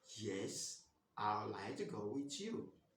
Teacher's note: if you want to answer this question, you use a falling tone.